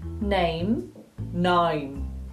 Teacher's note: It's a lot less of an A and it's more of an I. So it's actually more like you're going from an I to an E rather than an A to an E